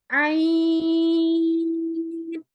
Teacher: ये हलक के दूसरे हिस्से से, दरमियान वाले हिस्से से अदा होता है